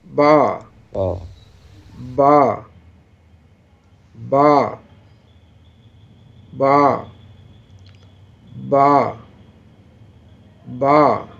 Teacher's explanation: دونوں ہونٹوں کے تری حصے سے، یہ ہونٹوں سے حروف ادا ہوتے ہیں